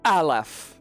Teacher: It's the glottal stop that starts Aleph. The shutting off of air before Aleph.